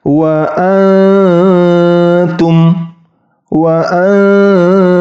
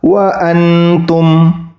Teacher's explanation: sedikit digigit atau bertemu dengan ujung gigi Siri atas ta nah ketika nun sukun bertemu huruf ta Nun bunyi nunnya hilang langsung masuki huruf ta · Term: disamarkan